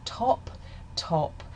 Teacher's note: in the word top, top, there's a burst of aspiration. Top top after I say the t sound, you can feel a strong burst of air in this accent.